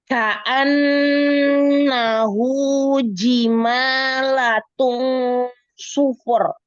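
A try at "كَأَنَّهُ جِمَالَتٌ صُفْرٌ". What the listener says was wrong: Kok Ji-nya lagi-lagi jadi agak ini ya, agak hamas. Ji. Ka'annahu jima. Oke, sufur, bukan sufur.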